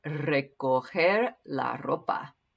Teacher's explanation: I'm rolling my R's a little bit because they're at the beginning of the words, recoger and ropa. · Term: rolled R